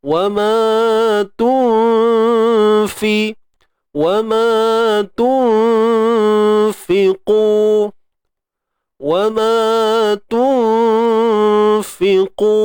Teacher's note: Qu tebal. Sebab apa tebal ni? Sebab dia isti'la. Kemudian di baris depan kita kena muncung. · Dan fa ni huruf nipis, maka dengung pun nipis.